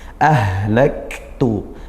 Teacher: dialirkan suaranya desis ya untuk ha, mengalirkan nafas dan suara. Nah, tapi sesuai makhrajnya ha juga, yaitu di pangkal tenggorokan.